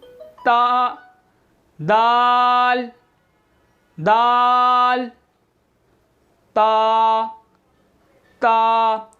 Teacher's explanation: ज़ुबान की नोक ऊपर दांतों की जड़ों से लगेगी